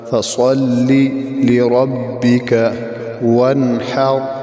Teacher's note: لربک را کے اوپر زبر موٹا